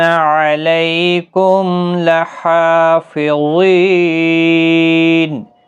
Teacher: میم ساکن کے بعد لام آئے، اظہار شفوی ہوگا